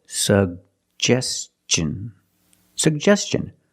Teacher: Put the stress on the second syllable.